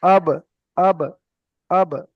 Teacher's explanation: বা দুই ঠোট মিলিয়ে উচ্চারণ হয় · তো এখানে বা এর উপরে যখন সাকিন আসবে হামজা বা জবার আব তো এখানে বা টা উচ্চারণের জায়গায় লেগে মাত্র আলাদা হয়ে যাবে